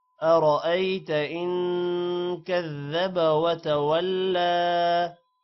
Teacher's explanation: لام پر کھڑی زبر ہے تھوڑا سا لمبا کریں گے